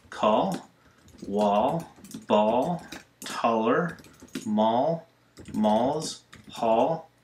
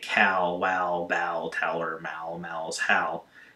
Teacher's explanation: the all sounds about like a short o plus an l sound it's not exact as i've said many times but it's very